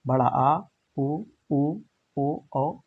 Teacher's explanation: पश्च स्वर जो जीवा के पीछे वाले भाग से बोला जाता है